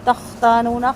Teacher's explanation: خا کی آواز تھوڑی سی چلے گی، آخر والا نون لمبا نہیں ہوگا